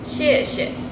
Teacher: kalau misalnya ada kata yang diulang 2 kali, biasanya kata yang kedua itu akan jadi bernada netral